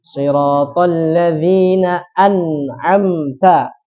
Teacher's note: Yang dimaksud jelas adalah nunnya ini terbacanya an, jelas nun. Bukan samar, al. Jadi terbacanya jelas. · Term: hukum izhar